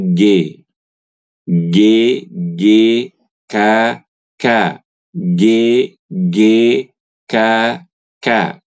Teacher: pangkal lidah kita ditempelkan ke langit-langit yang keras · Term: huruf kaf